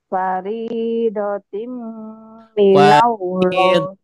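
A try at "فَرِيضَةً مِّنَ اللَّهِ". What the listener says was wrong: Faridotam bukan paridotim ya. Kenapa jadi paridot? Paridotim ya. Faridatan minallah.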